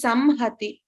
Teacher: there is no nasalized sound. It is Samhati. We have to pronounce the makara completely. So this is ma, like the English M.